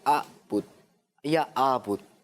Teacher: جو بچے توجہ کے ساتھ نہیں پڑھتے وہ عین کو حمزہ پڑھ لیتے ہیں